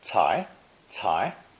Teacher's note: So it's also pronounced second tone cai, cai.